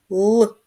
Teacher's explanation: звук л він приголосний твердий